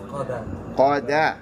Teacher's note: Because remember, qa is isti'ala. It's heavy. But dal is not. So you can't say qadda.